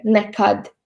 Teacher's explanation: stress on the second syllable is in the word nekad or never. You can hear nekad.